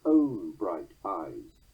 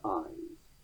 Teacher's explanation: Shakespeare's use of it in the third foot causes the stress to hammer harder down on the word own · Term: Pyrrhic substitution